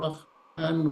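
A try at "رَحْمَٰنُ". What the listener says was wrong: Ar-Rahman. Maknanya panjang ya.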